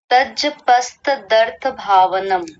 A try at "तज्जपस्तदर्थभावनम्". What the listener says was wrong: कई अक्षर आधे कर दिए। तज तज नहीं, तज्ज तज्ज पस्त, ये त भी पूरा बोला जाएगा। तज्जपस्तदर्थ भावनम।